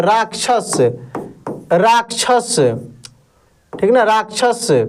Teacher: तो ये आधा क और मूर्धन्य श के मिलने से बना है।